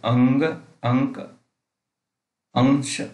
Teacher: अनुस्वार के उच्चारण में नाक से अधिक सांस निकलती है और मुख से कम